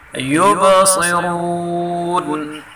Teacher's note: با میں کلکلا کریں گے اور صاد را دونوں کو پر پڑھیں گے